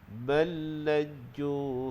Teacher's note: dimasukkan terus lam yang pertama ke dalam lam yang kedua